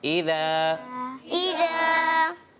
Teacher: ایک الف ہے. ایک الف یعنی 2 حرکات کی مقدار کھینچ کر پڑھیں گے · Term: مدہ